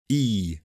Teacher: is made with the tongue to the front of the mouth and the jaw close the lips are unrounded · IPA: /iː/